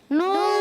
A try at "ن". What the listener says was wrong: ہونٹوں کو صحیح گول کرنا ہے، ٹھیک ہے نا، نون،